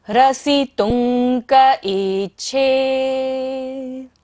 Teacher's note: ता के ऊपर बिंदी है और बाद में क्या आ रहा है? क, तो अंग की तरह उच्चारण करेंगे हम यहाँ पर बिंदी का।